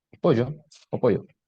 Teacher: sont prononcés comme une consonne fricative palatale voicée